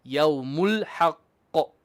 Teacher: Straight from the lam, which has izhar, onto the ha.